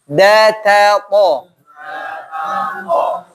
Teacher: ini ujung bertemu dengan tempat tumbuhnya gigi atas, gusi.